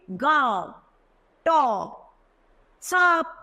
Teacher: होता है सुब अनुसिका इसका चिन्ह चंद्र बिंदु होता है जिका उच्चारण नाक और मुह दोनों की सहायता से किया जाता है